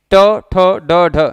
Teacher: ट ठ ड ढ जीभ पीछे की तरफ फोल्ड हो जाती है, तो जिन वर्णों को बोलते समय जीभ पीछे की तरफ फोल्ड हो जाए वो भी मूर्धा के अंतर्गत आते हैं।